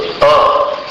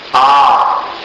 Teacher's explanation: एक मात्रा है वो बोलने का जो समय लगता है अपने को वो समय का एक परिमाण है उसको मात्रा कहते हैं। तो अ इसको बोलने में एक मात्रा का समय लगता है। आ इसको बोलने में दो मात्रा का समय लगता है।